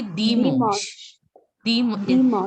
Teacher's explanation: The N sound doesn't has to be there. It has to be a nasal sound.